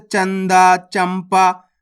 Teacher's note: जब आप पढ़ोगे ना इसको इसी तरीके से पढ़ना, दाम अनुस्वार की मात्रा दंग ग, तो मिलके बन जाएगा दंग। अनुस्वार की मात्रा इसलिए कहते हैं अपन इसे, इसका उच्चारण नाक से होता है।